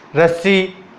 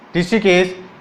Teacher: रे एक ऐसा वर्ण है जिसके उच्चारण में अपने जबान को 2 से 3 बार कंपन करना पड़ता है, तब जाके रै की ध्वनि बाहर निकलती है। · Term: प्रकंपित